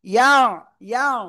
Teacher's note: ইয়া আইন জবর ইয়া, ইয়া, ইয়া, গলা চেপে পড়তে হবে